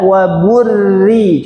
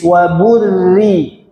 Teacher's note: Meskipun sebelumnya dommaah di sana tipis. Tetap tipis karena rnya kasrah tasdid.